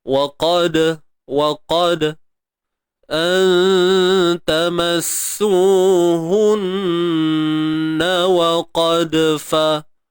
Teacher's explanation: Huruf wa beri atas waqad. Dal yang mati di tengah bacaan. Qalqalah sughra, lantunan yang kecil.